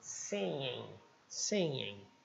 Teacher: Então, sempre que eu tiver o ing, eu vou usar esse n com essa trombinha aqui, que é o in. É como se fosse um ing, só que espremido. Você espreme a garganta assim e não dá para dizer o g.